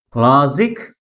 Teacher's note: First syllable second syllable కంటే ఎక్కువ ఫోర్స్గా పలుకుతుంది. కాబట్టి ప్రైమరీ స్ట్రెస్ని ఫస్ట్ సిలబుల్ ముందు ఉంచాలి.